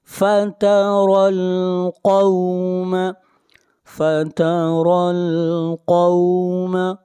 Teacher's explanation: قاف کو موٹا پڑھیں گے، قاف حروف مستعلیہ میں سے ہے